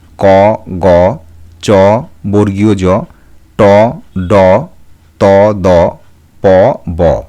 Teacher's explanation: মূল ধ্বনির সঙ্গে কোন হ ধ্বনিকে মিশিয়ে দেওয়া হয় না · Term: অল্পপ্রাণ ধ্বনি